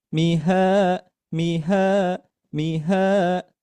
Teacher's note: di ha ini dibaca panjang 2 harokat karena dihukumi yaitu mad asli. Dibaca panjang 2 harokat, kemudian di sini sudah ada tandanya di modul yaitu mengayun.